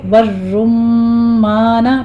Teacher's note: اکلہ والزیتون، زئی کی کبھی آواز کے ساتھ سیٹی کی آواز آنی چاہیے، آگے آپ نے یا لین ادا کرتے ہوئے پھر واو مد ادا کرنی ہے، 2 کاؤنٹ کرنی ہے یہاں پہ۔ والرمان، پہلے را مفخم پڑھی جائے گی، آگے میم کے اوپر تشدید ہے، غنہ کریں گے